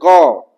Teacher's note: तो जीभ कहां जा रहा है? कंठ की ओर जा रहा है।